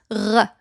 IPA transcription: ʁ